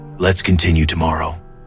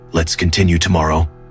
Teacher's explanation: slightly lowering their tone at the end of each sentence. It makes every statement sound complete, certain, and final. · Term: end weight delivery